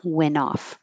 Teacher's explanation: I'm getting rid of the T and connecting the N.